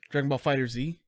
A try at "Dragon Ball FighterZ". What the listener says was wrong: Fighters. It is Fighter Z, but it's pronounced Fighters. Yeah. Yeah, it's strange, man.